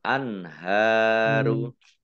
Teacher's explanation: nun sukun bertemu dengan huruf ha bacaan izhar dibaca jelas